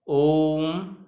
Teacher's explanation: इन स्वरों के उच्चारण में हमें 3 गुना समय या उससे अधिक समय लगता है। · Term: पुरुष स्वर